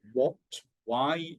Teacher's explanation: if we say things like what, why, you don't hear the h at all